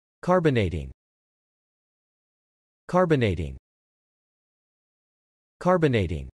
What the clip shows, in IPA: kɑɹbənejtɪŋ